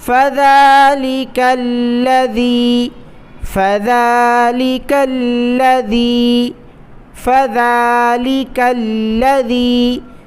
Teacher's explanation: فذلك الذي يدع اليتيم، فذلك الذي، یہاں پر بھی وہی کاف کو لام کے ساتھ ملانا ہے، لام کو سختی سے ادا کرنا ہے، اس کے بعد ذال ہے، ذال کو زبان کی نوک باہر نکال کر پڑھیں گے۔